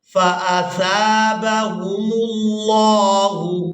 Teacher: یہاں پر ہم نے صرف سا کو الف مدہ کی وجہ سے کھینچ کر ادا کرنا ہے، اس کے علاوہ باقی جو حروف ہیں وہ بغیر کھینچے اور بغیر جھٹکے کے ادا کیے جائیں گے۔